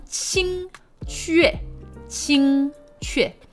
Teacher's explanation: First tone and then fourth tone. The Q, again, in Chinese is usually kind of close to an English CH.